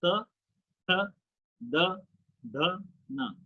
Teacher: दंतव्य मतलब दांत के पिछले हिस्से से आपकी जीभ टकरा रही है।